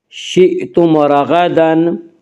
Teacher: حیث شئتم، شئتم کو جھٹکے سے پڑھیں گے، شئتم، شئتم رغدن، شئتم رغدن میں اظہار شفوی ہوگا، اس کا قاعدہ یہ ہے کہ میم ساکن کے بعد میم اور با کے علاوہ کوئی اور حرف آئے تو وہاں پہ اظہار شفوی ہوگا، یعنی میم کو ظاہر کر کے پڑھیں گے، اور یہاں میم ساکن کے بعد میم اور با میں ان 2 حرفوں میں سے کوئی حرف نہیں ہے، اس یہاں پہ اظہار شفوی ہوگا، یعنی میم کو ظاہر کر کے پڑھیں گے۔